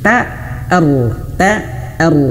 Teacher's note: rnya tebalkan ter dan t-nya jangan sampai terbawa tebal ya.